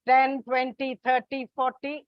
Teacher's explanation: Multiples of 10, 10, 20, 30, 40, it is on the first syllable.